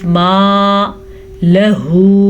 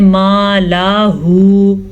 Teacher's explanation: لام کو لمبا نہیں کرنا. اکثر لوگ پڑھتے ہیں ما لاہو، یہ بہت بڑی غلطی ہے.